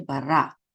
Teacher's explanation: Accent is on the last syllable, ra.